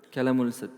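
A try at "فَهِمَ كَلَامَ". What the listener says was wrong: Di cetakan saya setelah lam itu ada alif. Ada. Kenapa tidak panjang? Fahima kalam. Sisa sekarang harokat akhir. Ini panjang pendeknya saja tidak diperhatikan.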